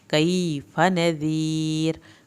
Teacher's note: कैफा में या साकिन को खींचें, फा की ज़बर को लंबा नहीं करें । नज़ीर, रा आखिर में नज़ीर का पतला पड़ा जाएगा, या